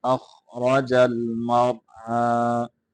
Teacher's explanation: خا را دونوں کو مٹا کر کے پڑھیں گے، اخرج المرعى، را کو مٹا کر کے پڑھیں گے اور یہاں را کو ہلائیں گے نہیں